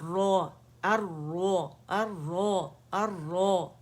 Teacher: اور نرم تالو کی طرف اس کا زبان کا پیچھے کا حصہ اٹھے گا, تو را موٹی پڑی جائے گی. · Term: موٹی را